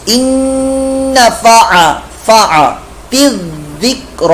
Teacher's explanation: اچھا, ان فع تذکر, تا کو ذال کے ساتھ ملانا ہے, ذال کی آواز زا میں نہ جائے, تذکر یہ غلط ہو جائے, تذکر.